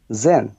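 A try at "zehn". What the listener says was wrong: সেন, সোলভ, সোলভ, এগুলা জেডের উচ্চারণগুলা জে এর মতো হয় না, সো এর মতো হয়, ঠিক আছে। সেন, সোলভ।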